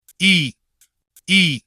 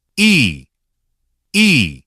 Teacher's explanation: First, E, short and light. E, E. Now, E, longer and clearer.